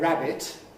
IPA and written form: ˈræbɪt (rabbit)